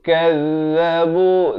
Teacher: Zal di hujung lidah. Kazzabu 2 harakat muncungkan mulut.